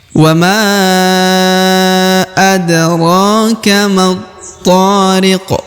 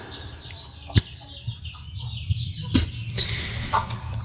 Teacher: huruf qaf-nya disukunkan karena berada di ujung ayat sehingga dibaca pantul atau qalqalah